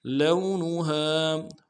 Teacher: لام کو واو کے ساتھ ملانا ہے، واو لین ہے، بغیر کھینچے پڑیں گے، نون کو نون سے ادا کریں گے، ہا کے ساتھ الف مدہ ہے، ایک اطمینان میں کھینچیں گے.